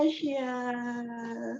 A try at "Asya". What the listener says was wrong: Her name is not pronounced like the continent Asia. It's pronounced Asya.